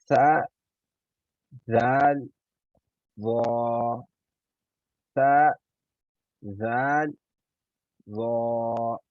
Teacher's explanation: ثنایا علیہ اور نیچے والے کے درمیان اپنی زبان کی نوک رکھتے ہوئے ادا کرنے ہیں